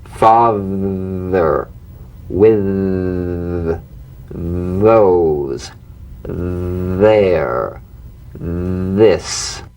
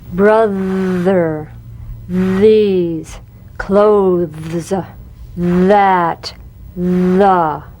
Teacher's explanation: The voiced tongue point to teeth fricative TH. The vibrant sound of the voiced TH has a quality much like that of the V.